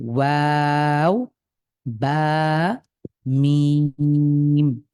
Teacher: তো এখানেও উচ্চারণে কাছাকাছি মাখরাজ, যেমন প্রথম তিনটা হরফ দেখেন, ওয়াও, বা, মিম। এই তিনটি হরফ আমাদের ঠোঁটের সাহায্যে উচ্চারিত হয়। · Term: ওষ্ঠবর্ণ